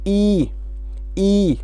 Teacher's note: समृत means close, जब इनका उच्चारण करेंगे तो मुंह क्लोज है। जैसे ई, मुंह का कोई खेल नहीं है, बंद है।